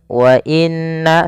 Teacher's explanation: Munfasil artinya terpisah. Jaiz itu boleh mad panjang, maka di sini na-nya dipanjangkan sepanjang 4 harokat atau 5 harokat. Wa inna, setelah pertama menahan nunnya, kemudian na-nya dipanjangkan lagi. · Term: mad jaiz munfasil